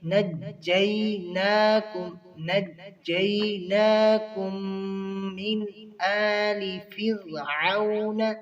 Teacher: نون کے اوپر نجیناکم جو کھڑی زبر ہے ایک الف کے برابر پڑھیں گے. نجیناکم، یہاں پر کم جو میم دونوں مل رہے ہیں یہاں پر ادغام ہو رہا ہے.